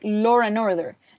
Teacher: people who speak with a non-rhotic accent, like British people, they add the R sound, and it would sound like law and order. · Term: intrusive R